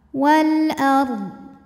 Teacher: qamariah yaitu Hamzah maka lsung sukun dibunyikan dengan jelas Wal ARD ro sukun dibunyikan secara tafkhim karena didahului harakat fathah maka bacanya tebal · alif lam menghadapi huruf qamariyah yaitu hamzah, maka lam sukun dibunyikan dengan jelas. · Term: alif lam qamariyah